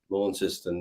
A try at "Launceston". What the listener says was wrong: you see, we wouldn't pronounce it Launceston like that. It's just pronounced. In fact, if you come from Launceston, it's Launceston. I don't even pronounce the T.